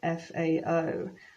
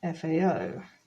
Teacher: notice that there's more emphasis on the o